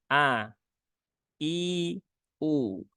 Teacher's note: huruf hamzah itu dia sifatnya tipis ya Sehingga terbaca dengan a bukan e e e kalau E begitu dia menjadi seolah-olah menebal Dan ini juga sering